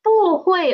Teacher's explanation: When 不 is before a fourth tone syllable, it will change to second tone.